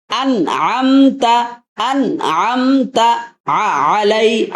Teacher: হামজার উচ্চারণ যখন করবেন তখন ধাক্কা দিয়ে পড়বেন